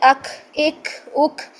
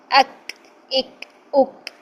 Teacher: ٹھیک ہے، ایسے ساؤنڈ نہیں لے کر آنی، بلکہ زبان کی جڑ اوپر تالو کو لگائیں، سخت تالو کو، اور بس اس کے بعد چھوڑ دیں